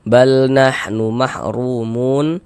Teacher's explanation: Tadi sudah kami jelaskan ya. Dibaca tebal baca takhim. Kemudian ru dibaca panjang.